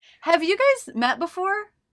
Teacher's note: I put a little break here between guys and met